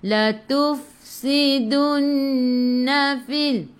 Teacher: Fa sifat hurufnya hamas kena ada angin